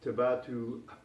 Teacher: you have to have that guttural stop at the end